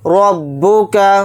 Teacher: वद्दअक रब्बुक, रा को बा के साथ मिलाकर पढ़ेंगे। रा के ऊपर ज़बर है, रा को मोटा यानी पुर पढ़ेंगे। बा को जल्दी पढ़ेंगे, काफ को जल्दी पढ़ेंगे।